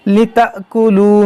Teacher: یہ حمزہ ساکنہ ہے، اس میں جھٹکا ہوگا